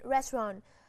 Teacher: Trọng âm nhấn vào âm đầu tiên, restaurant.